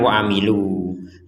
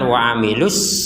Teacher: Jadi kalau kita wakof menjadi panjang wa amilu. Kalau digabungkan wa amilus menjadi pendek. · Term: pengurangan panjang